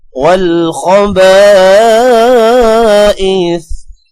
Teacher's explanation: والخبائث، خو کے ساتھ با اور با کے آگے الف ہے، الف کی وجہ سے با کو لمبا کریں گے، الف کے اوپر مد ہے اسی لیے با کو 3 سیکنڈز لمبا کریں گے